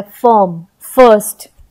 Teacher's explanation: आई का जो निकला उच्चारण वो अ के रूप में निकला है